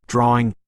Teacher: intrusion R adding an R sound where there isn't one orthographically often between vowels